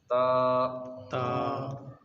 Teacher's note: زبان کی نوک اوپر کے دانتوں کی جڑ سے لگے گی